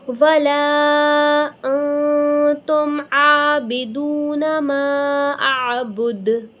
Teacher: اب جب ہم یہاں پر اخفا کریں گے تو غنّے کے ساتھ اخفا کریں گے، انتم، انتم، عین کھڑا زبر 1-2 الف کے برابر کھینچیں گے، دال واو پیش دو ہوا، میم پہ بھی مدہ ہے، عین کی آواز کلیئر پروناؤنس کریں گے اور دال پہ ہم وقف کرتے ہوئے قلقلہ کریں گے، یعنی دال کو ہلائیں گے